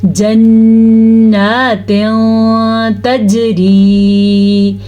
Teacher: غنّے کے ساتھ کریں گے اور کچھ چھپا کے کریں گے. تنوین کو، نون تنوین کو چھپا کے کریں گے. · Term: اخفاء